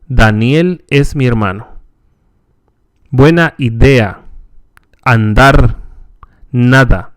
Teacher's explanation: The Spanish de is similar to the English de, but is pronounced with the tongue farther forward against the upper teeth.